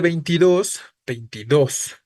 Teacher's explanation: Aguda terminada en S, no suena fuerte en 20, solo suena fuerte en 2